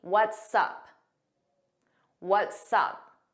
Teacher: notice it sounds like one word and you hear that S on what's and sup.